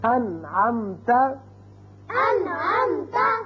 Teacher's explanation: اب نون ساکن کے بعد عین آ گیا، نون پر ہم نے اظہار کیا، نون کو ظاہر کر کے پڑھا